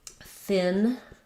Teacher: The thin sound, my tongue is resting between the teeth.